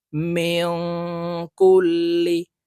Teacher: নুন সাকিনের উপরে ইফার হরফ কাফ আসছে তাই এই নুনকে নাকের ভিতরে লুকাইয়া গুন্নার সহিত পড়বো